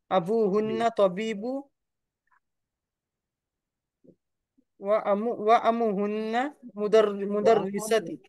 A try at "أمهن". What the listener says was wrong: امون کا لفظ ہے آپ کو امون بتایا گیا ہے. امون کا مطلب ماں ہوتا ہے تو امو پڑھ رہے ہیں آپ. وأمهن پڑھیں گے وأمهن مدرسة.